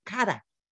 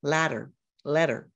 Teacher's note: And what happens is I'm not trilling that R. I'm just lifting my tongue up and down. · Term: soft R